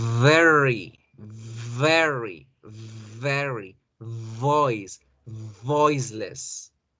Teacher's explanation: esa V la debo alargar un poquito más y que debo hacerla labios con dientes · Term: V labiodental